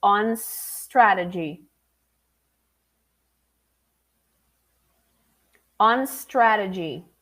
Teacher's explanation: you have to close the n on and then go to the S on strategy